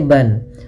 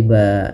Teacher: Fathatain berakhir di bacaan, ini kita namakan dengan mad iwad. Misalkan di sini asalnya ban, maka ketika kita waqaf berubah menjadi ba, kita iwadkan, kita ganti dengan panjang disebabkan karena kita waqaf.